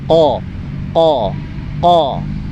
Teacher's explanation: Untuk huruf qaf ini ada agak berbeda sedikit. Q makhrajul hurufnya yaitu pangkal lidah itu menyentuh langit-langit bagian yang berdaging, bukan yang bertulang, tapi yang berdaging.